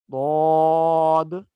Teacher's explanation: اوپر کی داڑھیں اور زبان کی کروٹ، اوپر کی بائیں طرف کی 5 داڑھوں کے ساتھ زبان کی کروٹ لگے گی تو ضاد کا مخرج ادا ہوگا